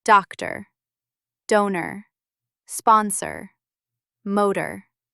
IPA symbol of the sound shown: ə